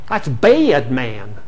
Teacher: You see, it's getting in the way of ah, and in upstate New York, ah is turning into air.